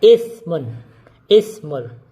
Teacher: yang pertama kita membaca hamzahnya dengan jelas